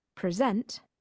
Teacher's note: present as a verb meaning to give a talk has the stress on the second syllable